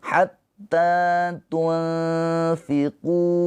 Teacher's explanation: Dibaca panjang qu-nya dua harakat. Hatta tunfiqu mimma. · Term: mad thobi'i